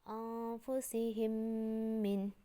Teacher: Ada mim mati bertemu mim. Bacanya jadi double. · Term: idgham mutamasilain